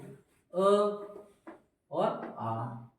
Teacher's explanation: आ कंठ से बोला जाएगा।